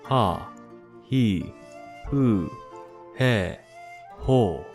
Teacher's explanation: the H in hu sounds more like a mix between the F and an H